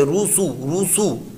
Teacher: سین پر بھی حرکت ہے، ہونٹ گول کر کے